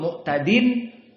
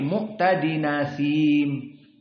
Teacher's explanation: naqal harakat dari Hamzah yang fathah yang hilang Hamzah tadi dipindahkan kepada Nun